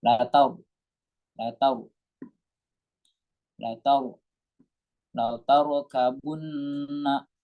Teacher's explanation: Latar di sini ada namanya ro tafkhim, harus dibaca tebal karena ada ro sukun sebelumnya berharokat fathah.